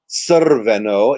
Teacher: So actually what you're saying here is Crveno. It's like TS with a schwa and then the R. · And R is often preceded by a little sound, a schwa, as we would say in English. So actually what you're saying here is Crveno. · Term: half vowel